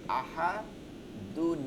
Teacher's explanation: এখানে নুন যোগ হয়ে যাইতেছে আর আল্লাহ শব্দ তখন কিন্তু বারিক হয়ে যাচ্ছে কারণ নুনে আছে না জের আছে আহাদুনি তার জন্য না লা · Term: নুনে কুটুনি